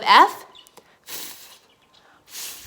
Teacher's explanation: your mouth it's like wind coming out of your mouth so there's not really any sound it's just the sound of wind